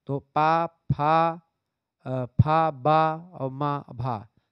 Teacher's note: पा, फा, बा, भा, मा ये सब ओष्ठ हैं